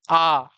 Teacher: मुंह ऐसा बड़ा खुल जाता है और जीभ जो है नीचे ही रहती है। ऊपर नहीं आती। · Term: विवृत स्वर